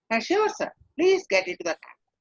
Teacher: not only a falling tone, but a greater warmth, more friendly